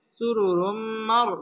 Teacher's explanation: তানবিনের বামে মিম আসছে মিম ইদগামে বা গুন্নার হরফ এখানে গুন্নার সহ মিলে পড়তে হবে